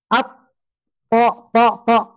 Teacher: jahar tidak menghembuskan nafas kalau th dihembus berarti salah ya